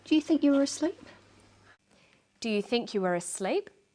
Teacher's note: Her voice goes up at the end of the sentence. We call this a rising tone.